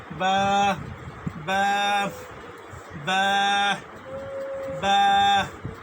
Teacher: বা হরফের মাখরাজ হচ্ছে আপনার দুই ঠোঁট হইতে উচ্চারিত হয়, বা এই দুই ঠোঁটের প্রথম হইতে বা উচ্চারিত হয়।